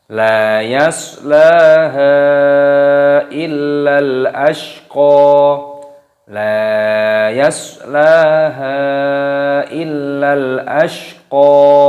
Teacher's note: La yaslaha illal ashqa, la yaslaha illal ashqa, lam alif dibaca panjang, la yas, soknya sukun, sotnya dibaca yasla, lamnya panjangkan, haknya juga dibaca panjang, mad jaiz munfasil dipanjangkan 4 harokat ataupun 5 harokat. La yaslaha illal, lamnya tasdid, lam alifnya ditasdid illa dan dipanjangkan.